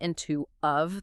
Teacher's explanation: And those little function words and and to of they often get reduced to weak forms